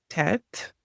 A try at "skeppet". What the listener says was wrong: Skeppet. So first P and then T at the end.